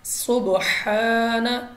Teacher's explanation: با ہمارے پاس ہے قلقلہ، تو ہم نے واپس لوٹتی آواز کے ساتھ پڑھا ہے سبحان، سٹینڈنگ یعنی کھڑی زبر ہے تو ہم نے اس کو 2 سیکنڈ تک لمبا کرنا ہے۔